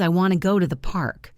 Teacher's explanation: Notice how want, go, and park are strong. The word to almost becomes a small sound like to.